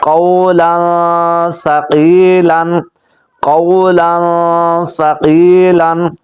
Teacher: اس کے اندر غنہ ضرور کریں گے، کیونکہ تنوین کے بعد سا آ گیا ہے اور سا حروف اخفا میں سے ہے۔